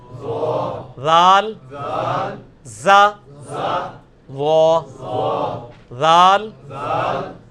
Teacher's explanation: نہیں یہ سیٹی کی آواز نہیں ذال میں آنی چاہیے, یہ نرمی والا ہے, یہ اس کے نیچے آیا ہوا ہے ذال, نرمی کے ساتھ ذال.